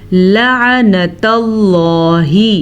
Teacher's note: لام زبر یا لئی، یا لین ہے، اسے ہم نے کھینچ کے نہیں پڑھنا۔ لعنت اللہ، لفظ اللہ سے پیچھے والے حرف پہ زبر ہے تو لفظ اللہ کو پر پڑھیں گے